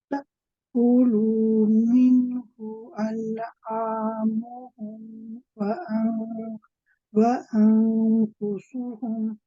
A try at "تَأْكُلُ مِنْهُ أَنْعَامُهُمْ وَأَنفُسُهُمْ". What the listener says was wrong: Okay, so be careful of the lu. Ta'kulu, you don't want to make the lu too long, one count only. When you say أنفسهم, again with the ikhfa, you can make it lighter still.